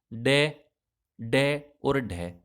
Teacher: बिल्कुल आपकी जो जीभ होगी ना, वो एक बार उठ के नीचे झटके से गिरेगी